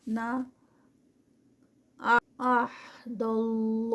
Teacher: अल्लाह का नाम हैवी क्योंकि उससे पहले ज़बर आ रही है।